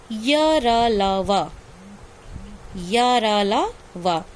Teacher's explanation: इनके उच्चारण के समय जीभ मुंह के किसी भाग से पूरी तरह स्पर्श नहीं करती। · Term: अंतस्थ व्यंजन